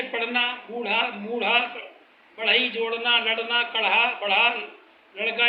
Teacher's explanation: इन ध्वनियों को उच्चारण करने के लिए मूर्धा से रगड़कर ध्वनि उत्पन्न की जाती है, जबकि शुद्ध मूर्धन्य में जीभ को मूर्धा से केवल स्पर्श किया जाता है।